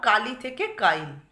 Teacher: এখানে লয়ের পর হর্ষইটা ছিল, উচ্চারণ করলেই বুঝতে পারবে কালি লয়ের পরে হর্ষই রয়েছে, সেটা দেখো লয়ের পূর্বে স্থাপিত হয়েছে, এটাকে বলা হচ্ছে অপিনিহিতি